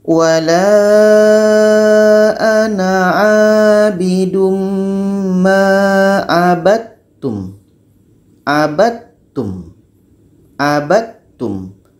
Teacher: Tapi karena terjadi hukum idgham mutajanisain, bunyi dal qalqalah ini hilang, masuk kepada ta. Dal mati masuk kepada ta.